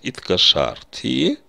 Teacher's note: перед окончанием первого, второго лица в прошедшем времени я слышу звук «а» в слоге «иткашарти»